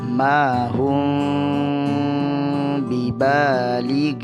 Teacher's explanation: Sambil menyamarkan bacaan mim, Anda juga harus menahan bacaan tersebut sebanyak 2 harakat sekaligus, membaca dengan gunnah atau dengung. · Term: ikhfa syafawi